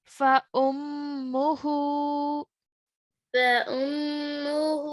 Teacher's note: for the meme mushaddad, we have to make a ghunna sound